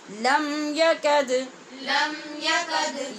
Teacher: لم کے میم پہ اظہار شفوی اور یکد کی دال پہ قلقلہ